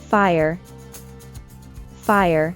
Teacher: Although fire may look like a one-syllable word, in reality, We'd add a schwa sound when pronouncing it